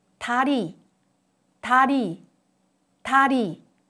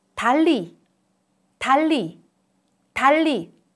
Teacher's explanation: There are two consecutive 르 sound, 달리, 달리, 달리. When there are two 르 consecutively, it is pronounced as L sound. This L sound is lateralized.